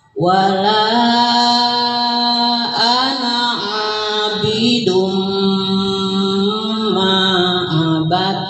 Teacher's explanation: Jangan lupa abidum ma ya, jadi agak lama didengungkan.